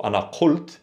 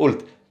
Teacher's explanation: The qaf in dialect typically becomes a glottal stop, a or ga, and a ult or gult.